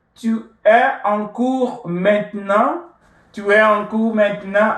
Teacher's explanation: You raise your voice a little bit, getting to the end of the statement, and then your statement becomes a question that will demand yes or no answers. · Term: intonation